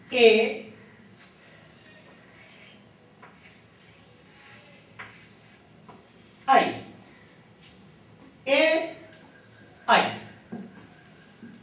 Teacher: इनकी ध्वनियां अ और इ के मेल से बनती है अ और इ के मेल से ए और ऐ होता है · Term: संधि अक्षर